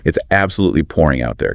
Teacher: Try to really emphasize the word pouring to show your frustration.